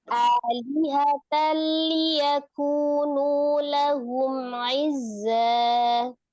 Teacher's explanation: perhatikan di tanwin ketemu dengan lamnya itu idgham bila ghunah. Idghamkan ke lam dengan tanpa digunahkan.